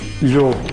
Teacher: todas as palavras que existiam em latim, em mirandês, passaram a pronunciar-se com lhe inicial, enquanto que em português se mantiveram com L